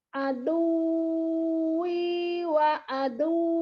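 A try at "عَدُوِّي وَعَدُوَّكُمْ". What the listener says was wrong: Kalau waw tasydid nggak boleh tahan. Karena nggak boleh ada gunnah. Yang ditahan itu kalau idgham bil gunnah baru ada dengung. Kalau ini nggak boleh.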